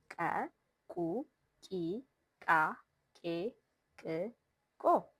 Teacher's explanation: you should make a popped ka sound with a burst of air from the throat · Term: ka families